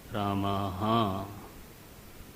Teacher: विसर्ग में पूरा ह है आधा ह नहीं है